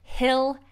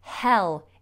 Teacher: the tongue and the back of the tongue is quite high if it's stuck up onto the roof of the mouth almost